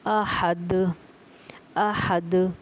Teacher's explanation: حمزہ زبر ا، ح زبر ح، اح، دال 2 پیش دن، احدن، وقفاً احد، احد، ٹھیک ہے۔ دال پہ قلقلہ ہو رہا ہے، دال کی آواز واپس پلٹ کے آ رہی ہے